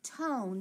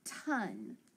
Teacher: he makes that vowel a long sound so he's going to make it say its name